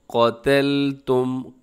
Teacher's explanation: इस आयत करीमा के अंदर वइज़ क़तलतुम, क़ाफ आपने मोटा पढ़ना है, क़तलतुम, और आगे ता बारीक है, फिर उसके बाद जो लाम है वो भी बारीक रखना है